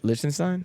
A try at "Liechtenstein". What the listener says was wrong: You putting an S over there, there's a C right there. Leach, it's not lease. Liechtenstein, fucking.